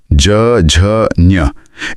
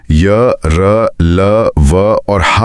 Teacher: इन्हें बोलते समय गले में कंपन ज्यादा होती है। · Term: मृदु व्यंजन